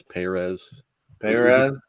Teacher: he likes the emphasis on the first syllable of his last name